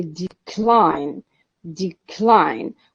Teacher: is the stressed syllable it's the second one of course since it is the second syllable that is stressed